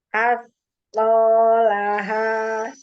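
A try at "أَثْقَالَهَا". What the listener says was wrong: Ya, ini masih berhenti. Dan tapi asqalaha.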